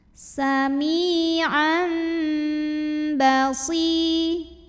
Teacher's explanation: tanwin fathahnya ini yang tadinya bunyi n diganti jadi bunyi m, jadi bunyi mim sukun disertai bunyi dengung tahan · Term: iqlab